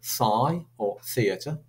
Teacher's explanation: these are called dental fricatives